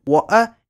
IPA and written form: ˈwoːʔɐ (water)